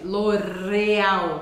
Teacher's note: em português você vai muitas vezes usar a ponta da língua para pronunciar o r